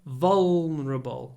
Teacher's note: it has a very dark l, which is pronounced in the throat.